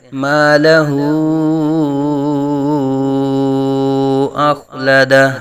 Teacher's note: حروف مدہ کے بعد حمزہ دوسرے کلمے میں آ رہی ہے، تو یہاں مد منفصل ہوگی، دو ڈھائی الف تک کھینچ کر پڑھ سکتے ہیں ، مالہ اخلدہ، قاف کے اوپر آواز ہلے گی نہیں، اخلدہ،